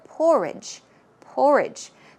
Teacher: porridge porridge stress goes on the first syllable